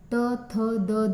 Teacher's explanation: दंत वर्ण मध्ये आपल्या दाताचा उपयोग होतो